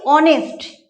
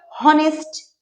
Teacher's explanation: এইচ এর পর ও আছে, এই ও এর উচ্চারণটা প্রাধান্য পাচ্ছে, এইচ এর উচ্চারণটা থাকছে না।